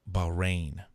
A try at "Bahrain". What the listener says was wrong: You have to pronounce the H. It's Bahrain. Bahrain. Bahrain.